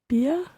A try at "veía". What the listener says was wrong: It keeps the E of the VER infinitive, and then it adds the ia endings on after that.